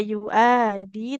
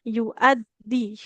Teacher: Hamzahnya enggak panjang, tidak yu'adi tapi yu'addi karena dalnya ada tasydidnya